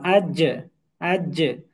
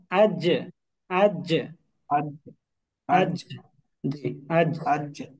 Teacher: জিহবার মধ্যখান উপরের তালুর সাথে লাগবে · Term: জিম